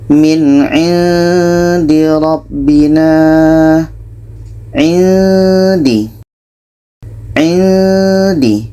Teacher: Ketika kita sebut huruf nun, kita sudah merasakan huruf da. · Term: ikhfa hakiki